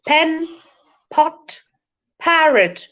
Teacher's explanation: A little aspirated sound. Along with P, you have to throw little air inside your mouth.